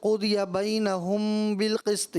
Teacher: میم ساکن کے بعد حرف بار ہے، چونکہ اخفاء شفوی